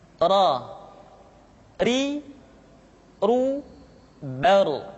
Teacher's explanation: diucapkan dengan menyentuhkan punggung lidah dengan langit-langit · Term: huruf ro